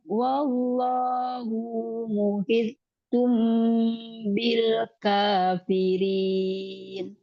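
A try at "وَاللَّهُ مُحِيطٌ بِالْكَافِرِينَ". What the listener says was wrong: Hu-nya nggak ada amat.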